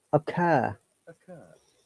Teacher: This O is a short sound, and the R is silent in British English because there is a vowel sound before it. We only pronounce R if there is a vowel sound after the R.